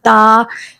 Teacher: जो हमारी जुबान की नोक है, ऊपर के जो दांत होते हैं ना, दो ऊपर दो नीचे, लेकिन जो ऊपर के जो दांत होते हैं उसकी जड़ से लग जाए हमारी जुबान